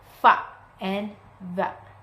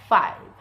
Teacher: Produced consonant sounds by contacting the upper teeth and the lower lip. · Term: Labiodental sound